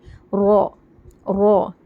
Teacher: र पर जबर आएगा तो र मोटी पढ़ी जाती है